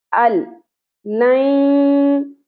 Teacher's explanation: नून यहाँ पे बिल्कुल साइलेंट हो गया, ठीक है, मिला दिया हमने, लेकिन हमने गुन्ना नहीं किया, नाक में आवाज को नहीं खींचा।